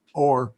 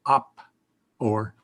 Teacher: because the next word starts with an O already, it drops one of the O's. So it's not oppo or, it's op or.